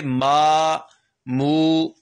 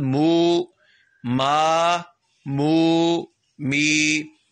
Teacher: جب میم ادا کریں گے تو ناک میں آواز نہیں جائے گی, آواز منہ میں گونجے گی, گلے کے اندر آئے گی آواز.